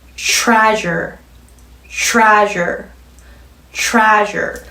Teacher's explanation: TR이 단어의 앞에, 음절의 앞에 오면 입술 똑같이 내밀어서 CH가 만들어내는 소리처럼 만들어주시면 되는 거죠. 연속해서 가벼운 에 넣으시고요. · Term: TR, 겹자음